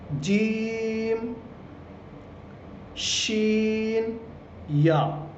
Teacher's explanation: زبان کا بیچ اور اوپر کا تالو